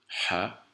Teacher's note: ha qui est une lettre gutturale, donc qui se prononce au niveau du haut de la gorge